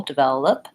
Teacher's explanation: stress is on the middle syllable vel that has the clear vowel eh. And watching out for the V sound that you have teeth and lip connecting and the sound continues, v, vel.